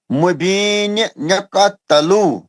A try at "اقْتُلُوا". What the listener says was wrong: تلو نہیں، پیش ہے طلوع گول ہوٹوں سے. اقتلو پیش لگا نا. طلوع گول ہوٹوں سے.